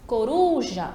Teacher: Coruja, a mesma coisa, a tônica vai ser ali a ru. A penúltima sílaba. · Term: sílaba tônica